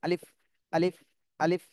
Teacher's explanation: এই আলিফটা কোন টান দেয়া যাবে না দ্রুত বলতে হবে এবং মুখ থেকে একটু বাতাস বের হবে